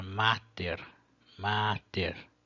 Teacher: a primeira sílaba da palavra mater mater é uma sílaba longa por natureza porque ela contém uma vogal longa